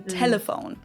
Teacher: a light L that is more pronounced with the tip of your tongue. As in telephone.